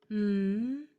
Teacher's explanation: made with my lips together and they don't separate